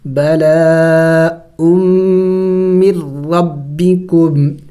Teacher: ہم یہاں پہ میم کو را کے ساتھ ملا رہے ہیں اور نون ساکن کو نہیں پڑھ رہے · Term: ادغام